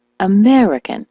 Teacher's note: frustrated and she asked me what she was doing wrong well the word American as you know is stressed on the me American so she was saying Americano sounds normal doesn't it well